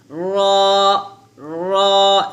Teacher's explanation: হচ্ছে 10 নং মাখরাজ জিহ্বার আগার পিঠ অথবা জিহ্বার আগার উল্টা পিঠ বলতে হবে। এখানে জিহ্বার আগার উল্টা পিঠ তার বরাবর উপরের তালুর সঙ্গে লাগিয়ে রটা মোটা করে উচ্চারণ করতে হবে, যেমন এখানে রা হবে না, বলতে হবে র, র এভাবে মোটা করে উচ্চারণ করবেন, র, র এভাবে।